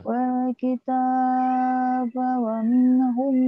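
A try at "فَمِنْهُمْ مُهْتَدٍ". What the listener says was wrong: faminhum muhtad, bukan wamin, famin.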